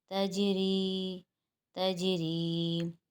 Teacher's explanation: یہاں پر جیم ساکن آ رہا ہے اور جو حروف قلقلہ میں سے ہے، اور حروف قلقلہ ساکن حالت میں قلقلہ کرنا پڑتا ہے۔